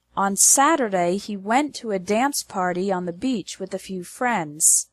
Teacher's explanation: The stress is on the words Saturday, went, dance, party, beach, and friends.